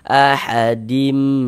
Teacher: Kemudian di ghunahkan. Jadi di bagian dimnya itu kita tahan suaranya. Nah, kita panjangkan sejenak.